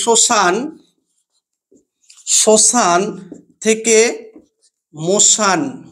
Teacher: এই যে এখানে তালব্যস্য ছিল, এই তালব্যস্যটি অর্থাৎ আদিতে অবস্থান করছিল, অর্থাৎ প্রথমেই ছিল, এটি অবলুপ্ত হয়েছে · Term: আদি ব্যঞ্জনধ্বনি লোপ